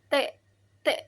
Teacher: pas kita kayak membunyikan atau menyuarakan huruf T itu kayak ada letupan gitu nggak sih? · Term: konsonan letup